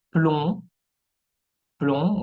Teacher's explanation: Jamás se va a pronunciar la B al final. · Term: B muette